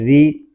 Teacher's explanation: را کو ہم باریک پڑھیں گے کیونکہ را کے نیچے زیر آ گیا ہے